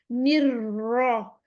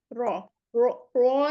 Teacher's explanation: नी और रॉ को मिला देना, रॉ को फिर की रोलिंग कर देना है, निर रॉ। अब रॉ कहते वक्त होंठ गोल नहीं हो, रॉ में रॉ, रॉ, रॉ नहीं कहना हमने, क्योंकि उसमें पेश नहीं है।